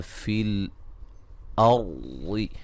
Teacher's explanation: را کو موٹا ادا کریں گے، را ساکن سے پہلے زبر ہے